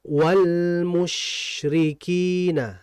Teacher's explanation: Dan lam mati ini sama seperti nun mengalir sebentar ya. Jadi ditahan dulu.